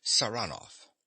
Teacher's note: he pronounces the name with a stress on the second syllable